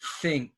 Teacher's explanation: it's with the tongue on the teeth. And there's no voice.